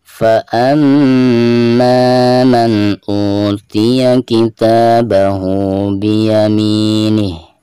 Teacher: فَأَمَّا di sini mim yang bertasydid ya, merupakan salah satu daripada huruf guna. Jadi cara membacanya itu harus ada tekanan disertai dengan guna 2 atau 3 harokat.